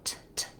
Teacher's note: the first letter T in tomato is what's called an aspirated T. It sounds like T, and there's a puff of air. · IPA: tʰ